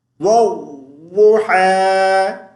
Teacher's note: واو کو الف اور لام کے ساتھ نہیں ملائیں گے، ضاد کے ساتھ ملائیں گے، ٹھیک ہے۔ والضحیٰ، واو کو ضاد کے ساتھ ملاتے ہوئے تھوڑی دیر رک جائیں گے، شد کو اچھے سے ادا کریں گے، والضحیٰ۔ اور اب اس ایک لفظ بھی ہماری دو ایسی مسٹیکس ہیں، اگر ہم کرتے ہیں تو نماز نہیں ہوتی۔